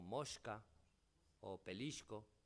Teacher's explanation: Ya se atisban ejemplos de palatalización de S en contacto con la velar sorda, con K, casos como mosca o pelisco.